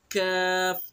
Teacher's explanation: कौफ, जबान की जड़ और उसके मुकाबिल ऊपर का तालु, कौफ, कौफ, कौफ। कैफ, कैफ, जबान की जड़ से कुछ ऊपर का हिस्सा और उसके मुकाबिल ऊपर का तालु